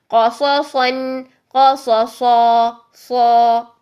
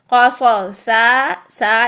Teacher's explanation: کیونکہ صاد موٹا ہے تو اس کا الف بھی موٹا ہی رہے گا، اس کا اینڈ بھی موٹا ہی رہے گا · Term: صا پورا موٹا